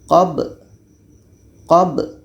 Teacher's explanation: Jadi sifat kedua huruf ini mesti terdengar. Ba ini sifatnya qalqalah. Jadi kita baca qalqalahnya atau pantulannya.